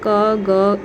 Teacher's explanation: अल्प प्राण जिसमें हमें सांस कम लेना पड़ता है या मुंह से हमारे कम वायु निकलता है